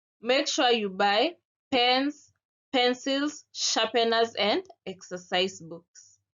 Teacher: a list of things is being said or is being read the intonation Rises with each item and falls on the last item to indicate that the list has has ended for example make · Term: rise fall intonation